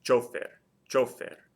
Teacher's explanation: Hopefully you can hear the stress is on the O.